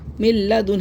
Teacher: یہاں پہ ہم کیسے پڑھیں گے، میم نون لام زیر مل، دیکھا آپ نے نون کو ہم نے نہیں پڑھا، لام کی آواز آئے گی صرف ، مل لام زبر لا، مل لا، دال نون پیش دن، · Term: ادغام بلا غنہ